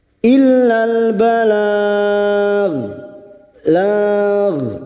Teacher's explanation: Huruf ghain yang dibaca waqaf jangan sampai memantul ya, jangan sampai dibaca balag ya, hindari pantulan karena bukan huruf qalqalah.